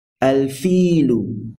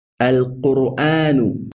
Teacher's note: we pronounce the al clearly, and we do not assimilate the lam into the jean · the lam from the word al is pronounced clearly. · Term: الحروف القمرية